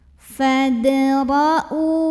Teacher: Karena ada hamzah berbaris dhammah yang ketemu dengan waw sukun. Dibacanya panjang 2 harokat. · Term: mad badal